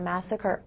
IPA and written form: m'æsəkɚ (Massacre)